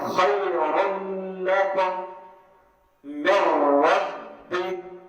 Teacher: اصل تو من ہے نا، من ربی، من، تو یہ من نون ساکن کو ہم نے کہیں سے بدلا ہے، نون ساکن کو کہیں سے بدلا ہم نے من رب میں را سے، تو دیکھو نون ساکن بالکل را سے بدل گئی تو نون ساکن کی ساری حالت پوری صفت ختم ہو گئی ہے نا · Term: ادغام تام